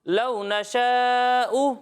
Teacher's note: یہاں مد متصل ہے، اسے ہم 2 یا پھر 2.5 الف کے برابر کھینچیں گے، اور یہاں او میں جھٹکا نہیں دینا، ٹھیک ہے، حمزہ پیش او نارمل۔